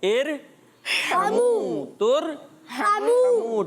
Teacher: عین ہا بیچ میں سے حلق کے ادا ہوتے ہیں